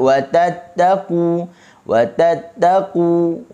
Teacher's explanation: Okey, jangan baca wa tattaqu, tu hujung lidah kita kena di gigi. Kita nak hujung lidah kita berada di gusi. Main point dia di gusi. Okey, bukan main point dia di gigi. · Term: hujung lidah digusi